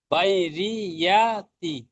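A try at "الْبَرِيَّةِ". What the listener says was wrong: বাই নয়, বাড়ি, বারিয়াতি, বারিয়াতি।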